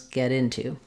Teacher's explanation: We have the eh vowel in get, and we have the I vowel and the oo vowel in into. And so I've written that here, get into with the oo vowel.